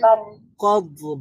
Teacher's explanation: দতটা হচ্ছে রাখাওয়ার হরফ, এখানে আওয়াজটা জারি থাকবে